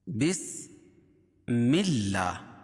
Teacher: کھڑا زبر قائم مقام الف مدہ کے، اس کو ایک الف کے برابر کھینچ کے پڑھیں گے